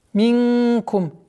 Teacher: Ихфа, мягкое в размере двухогласовок, удерживаем назализацию.